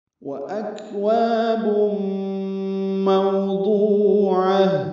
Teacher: واو ہونٹوں کی نا تمام گلائی سے جلدی ادا کریں گے، حمزہ کو اقصی حلق سے ادا کریں گے، کاف سے ملائیں گے، وکواب نہیں پڑھنا، وہ اکواب پڑھنا ہے.